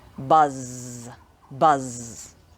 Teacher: one of these sounds is voiced and one is unvoiced buzz if you put your fingers on your throat when you say buzz you should feel the vibration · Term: z sound